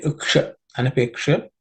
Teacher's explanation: the tip of the tongue should point to the roof of the mouth when you say sha